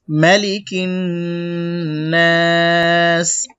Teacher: ওয়াকফ করার সময় এখানে তিন আলিফ লম্বা করব এক আলিফ তিন আলিফ হয়ে যাবে